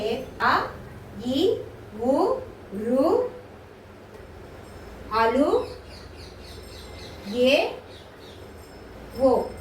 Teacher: ఈ ఏడు అక్షరాలని మనం ఏమంటామంటే హ్రస్వచ్చులు అంటారు అంటే ఇవి ఏకమ మాత్రాకాలంలో ఉచ్చరింపబడతాయి అన్నమాట ఒక కన్ను రెప్ప పాటులో మనం వీటిని ఉచ్చరిస్తాం కాబట్టి వీటిని ఏమంటారు అంటే